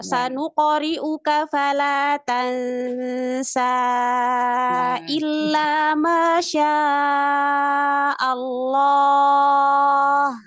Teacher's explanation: Kalau disambung baru dia panjang, baru kepake. Tapi kalau berhenti dia mato bi. Dua harokat saja.